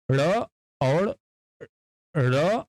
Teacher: उत्क्षिप्त व्यंजन ऐसे व्यंजन होते हैं जब इनके उच्चारण में जिह्वा तालु में बहुत तेजी के साथ टच करके वापस आती है